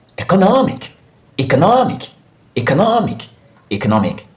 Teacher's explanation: you have the stress syllable in the syllable before the IC